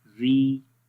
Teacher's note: تو ری میں آواز باریک پڑھیں گے، اوپر کی طرف نہیں جائے گی، نیچے کی طرف ہی رہے گی